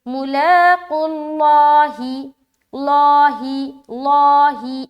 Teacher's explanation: قاف کے اوپر پیش کی حرکت ہے تو اس لفظ اللہ کا لام کو ہم موٹا پڑھیں گے